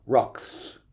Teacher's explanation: sound it's a buzzy sound technically we say it's voiced whereas the S sound is just a pure hiss with no laryngeal content no no vibration down here